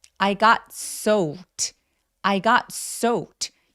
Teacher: 이거 발음할 때 soaked 안 돼요. 왜냐하면 soak처럼 동사 원형이 크크크 이렇게 무성음, 성대가 울리지 않는 소리로 끝났으면 이 ed는 통째로 t로 발음합니다. 그래서 soaked 아니고 soaked, soaked라고 표현해 주셔야 돼요.